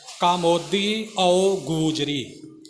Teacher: ਇੱਥੇ ਪਾਠੀ ਸਿੰਘ ਗਲਤੀ ਕਰ ਜਾਂਦੇ ਨੇ ਕਿ ਕਾਮੋਂ ਦੀਓ ਗੂਜਰੀ ਇਉਂ ਬੋਲ ਜਾਂਦੇ ਨੇ। ਕਾ ਮੋਦੀ ਕੱਕੇ ਦਾ ਕੰਨਾ ਵੀ ਪੂਰਾ ਬੋਲਣਾ ਤੇ ਆਓ ਨੂੰ ਬਿਲਕੁਲ ਵੱਖਰਾ ਕਰਕੇ ਬੋਲਣਾ